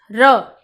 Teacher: जब हम र बोलेंगे तो वो लुटता हुआ बाहर आएगा, तो हम इसे क्या कहेंगे, लुंठित, कंपन करता हुआ बाहर आएगा। ठीक है, तो उसे हम क्या कहेंगे, प्रकंपित व्यंजन।